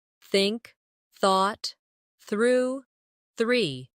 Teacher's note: put your tongue lightly between your teeth and push the air out for the soft th in think